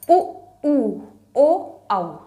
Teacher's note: होंठ हमारा गोलाकार है। उ, ऊ, ओ, औ, होंठ गोलाकार है। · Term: वृत्तमुखी